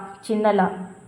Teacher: First லா, சின்ன லா. நாக்கொடிய இரு பக்கமும் தடித்து மேல் பல் இருக்கு இல்லையா, அந்த மேல் பல்லுடைய அடியை தொடர்றதால லகரம் தோன்றும்